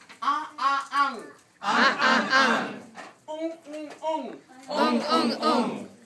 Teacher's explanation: The tongue is closing up that round part in the back of my throat.